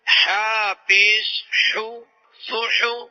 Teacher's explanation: جو حا ہے یہ حا حلق کے وسطی یعنی درمیان والے حصے سے نکلتا ہے